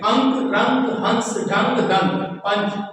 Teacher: रंग सम में देखिए अंक की बिंदी लगी हुई है जी इसमें केवल और केवल नासिका से वायु निकलती है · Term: अनुस्वार